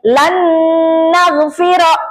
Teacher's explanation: gunah dia ditahan dulu ya. Ada jeda dulu